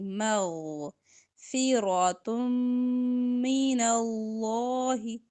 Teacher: غین پر آواز چلائیں گے اور موٹی ہوگی